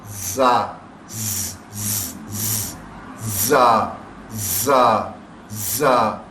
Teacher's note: جب بھی یہ آواز دیں گے تو ایک سیٹی کی سی آواز آتی ہے، کبھی بھی ہو، درمیان میں ہو یا شروع میں ہو یا آخر میں ہو، ایک سیٹی کی آواز پروڈیوس کرتے ہیں.